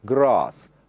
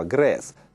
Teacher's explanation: на юге страны это слово произносится с длинным звуком А, grass, а на севере, как в слове hat, шляпа, grass, так же, как в американском английском.